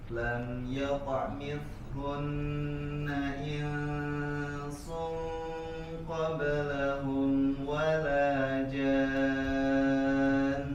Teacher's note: ya harus disempurnakan tasydidnya, tekan, baru kemudian ada gunnah